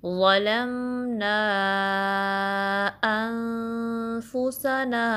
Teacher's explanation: जो मद होगी इसको हम मद मुनफसिल कहते हैं और इसके काउंट्स 3 to 4 होंगी।